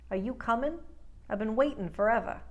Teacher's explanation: all those ing endings get rid of the G just stop at i n